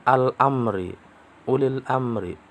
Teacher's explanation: Al-amri itu alif lam, lamnya dibaca dengan jelas, dibaca izhar. Itu disebut dengan alif lam qamariyah. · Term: izhar qamariyah